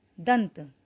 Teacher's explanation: इस शब्द में अनुस्वार के बाद आने वाला व्यंजन त है और त वर्ग का ही व्यंजन है, इसलिए इसमें त वर्ग के पंचमाक्षर न का प्रयोग हुआ।